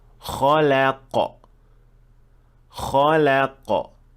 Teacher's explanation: So the kha and qaf are full mouth and the lam should be empty mouth. So you should switch from full to empty and then back to full.